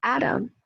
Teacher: the word atom, from being stressed on the first syllable, it was a two-syllable word, atom, very weak vowel sound in the second syllable